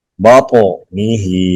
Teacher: تو پہ قلقلہ کریں گے، ہا کو لمبا کریں گے